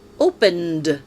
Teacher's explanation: the final sound of the verb is voiced, and the ending ed is pronounced d